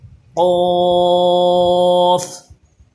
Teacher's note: یہ قوف زبان کی جڑ اور تالو کے نرم حصے سے ادا ہوتا ہے، اور یہ قاف زبان کی جڑ اور تالو کے سخت حصے سے ادا ہوتا ہے۔